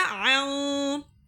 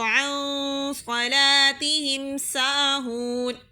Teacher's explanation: نون کی آواز کو ناک میں چھپا کر اس طرح پڑھا جاتا ہے کہ اس کی آواز اظہار کی طرح صاف نہ سنائی دے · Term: اخفا